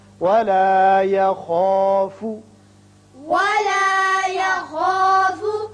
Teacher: خا چونکہ پر پڑا جاتا ہے حروف مستعلیہ میں سے ہے، اس کی وجہ سے الف بھی پر ہوگا. ولا يخاف نہیں پڑھنا بلکہ ولا يخا خا کر کے.